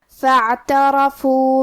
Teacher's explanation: حرف الراء پہ زبر ہے لہذا یہاں را کا حکم ہے تفخیم، ہم حرف الراء کو موٹی آواز میں پڑھیں گے